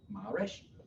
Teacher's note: with the A pronounced like in the word father, and the accent is on the first syllable